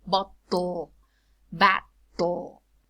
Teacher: When you say botto, we see that the plosive is released laterally. And that lateral is dark.